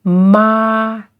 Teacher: this is the first tone because it is flat